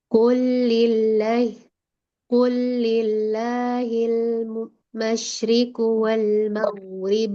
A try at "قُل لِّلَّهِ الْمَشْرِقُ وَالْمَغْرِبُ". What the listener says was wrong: Coba lagi kofnya ku cekuk lagi, cekungin lagi tengah lidahnya.